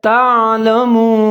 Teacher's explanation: जैसे व अंतुम, आगे है तालमून, ता के ऊपर ज़बर है, आइन साकिन है, आइन का आपने ख्याल करना है, इसको मोटा पढ़ना है। आगे लाम के ऊपर ज़बर है, मीम के ऊपर पेश है, आगे वाउ साकिन है, तो यहाँ पर आपने होंठ गोल करने हैं।